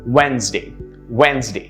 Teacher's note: the d in the middle actually is not pronounced it's silent · notice how it's only two syllables the d is silent